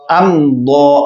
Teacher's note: اب غنہ نہیں ہوگا. ام میم ظاہر ہو رہی ہے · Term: اظہار شفوی